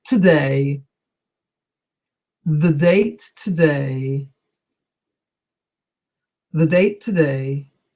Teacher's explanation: It's a little bit difficult to pronounce because you have the date today all very close with your tongue coming in and out